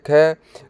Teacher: कंठ्य महाप्राण अघोष यह सही है।